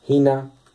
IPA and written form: h|(i)nɑ ((h)ina)